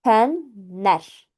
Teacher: burdakı n-nın biri düşür. L N ilə əvəz olunur və olur fənlər formasında tələffüz olunur.